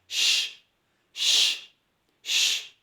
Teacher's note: شین کی آواز میں پھیلاؤ ہے، منہ سے اور دانتوں کے بیچ سے آواز پھیلتی ہوئی باہر نکلنی چاہیے، ش ش ش، اس طرح۔